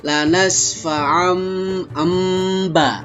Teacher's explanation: menukar tanwin dengan mim sukun dan kedua bibir ditutup dan suara diiringi dengan suara mendengung 2 harokat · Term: iqlab